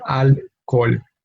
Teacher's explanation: in alcohol, we keep the H as silent, and therefore we only have two syllables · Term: silent letter